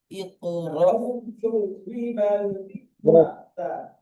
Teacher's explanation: সাকিনওয়ালা হামজা ধাক্কা দিয়ে বা ঝটকা দিয়ে উচ্চারণ হয়